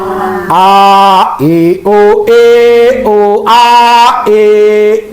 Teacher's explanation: A tenggorokan yang bawah. Tenggorokan bagian bawah. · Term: Hamzah